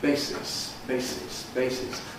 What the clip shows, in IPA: ˈbeɪsɪs